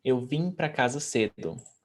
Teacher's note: when a word finishes with M, we don't pronounce the M. We turn it into a nasal sound.